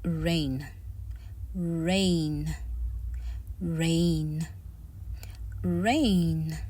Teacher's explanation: You can hear that there is a smooth slide or glide in between the letters R and N.